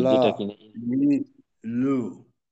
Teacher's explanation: আচ্ছা, লামের উচ্চারণটা আলহামদুলিল্লাহ আমাদের জন্য সহজ, তবে এতটুকু খেয়াল রাখবো যেন লামের উচ্চারণের শেষের দিকে জিহ্বাটা নিচু হয়ে না যায়, জিহ্বার আগাটা নিচে না পড়ে উপরেই উপরে রাখা